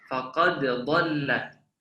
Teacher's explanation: Jadi dimasukkannya huruf dal mati ke dalam huruf dha yang berharakat ataupun berbaris ya.